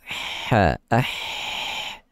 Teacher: itu mempunyai hembusan angin yang tidak ada getaran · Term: hams